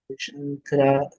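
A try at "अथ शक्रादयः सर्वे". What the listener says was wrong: Shakra. It is not Shankara. Shakra.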